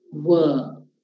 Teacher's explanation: both the lips are involved, but no tongue. So, you're not biting your tongue here.